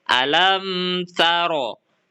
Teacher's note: huruf mim dibaca jelas dan tidak didengungkan serta tetap terdengar dengan jelas makhrajnya. Disebut syafawi karena huruf mim keluar dari bibir atau syafah. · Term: idhar sfawi